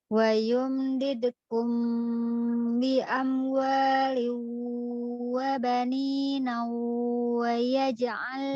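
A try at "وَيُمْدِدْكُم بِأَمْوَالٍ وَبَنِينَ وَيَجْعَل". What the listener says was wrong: Tidak ada itu nunnya tidak tanwin.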